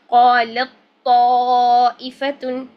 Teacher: تو ہم کیا کریں گے، یہاں سے باریک تا کو بالکل نہیں پڑھیں گے اور ہم لام کو فوراً موٹے تو کے ساتھ جوڑ دیں گے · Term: تام ادغام